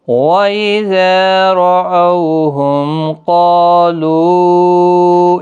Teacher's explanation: ہم میم ساکن کے بعد قاف اظہار شفوی کا ہوگا